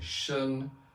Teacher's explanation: When I say shen, then it's high and level, that's first tone.